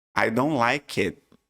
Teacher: em muitas situações, a gente nem pronuncia direito esse T